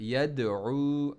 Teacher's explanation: عین کو middle throat پڑھنا ہے اور واو مدی. الف مدی, واو مدی, یا مدی آپ کو پتہ چل گیا, تینوں ساکن ہوتے ہیں اور انہی تینوں کو کھینچا جاتا ہے.